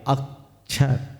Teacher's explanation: छ जो है संयुक्त है, उसके पूर्व अ है तो हमने अ पर जोर दिया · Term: संयुक्त आद्यम दीर्घम